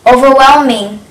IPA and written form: |oʊvər|welmɪŋ (overwhelming)